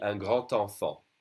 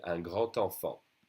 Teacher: So here, the D would be pronounced like a T when you do a liaison.